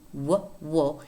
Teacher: made simultaneously one of them is lip rounding whoa and therefore oftentimes this phoneme is described as a bilabial approximant